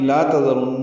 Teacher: تذرن یہ لا تذرن ہے، لال نرمی سے پڑھیں گے، را پر پڑھیں گے، نون مشدد پہ غن کریں گے